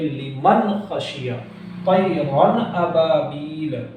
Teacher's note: دیکھیں حمزہ ہے، تو اس حمزہ کی وجہ سے اس تنوین کے اندر جو نون کی آواز آ رہی ہے اس کو صاف ظاہر کر کے پڑھا